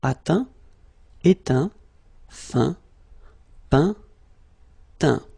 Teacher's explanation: as usual, final T not pronounced